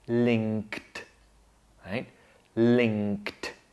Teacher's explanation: Notice that at the end we have a consonant cluster, a simple one, kd